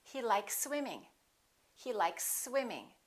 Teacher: You can prolong the S a little bit, but don't pause. Don't interrupt the sounds and don't break the two words in half. · Here we have an S, likes, and here we have another S. When we have two same consonants, we only pronounce one.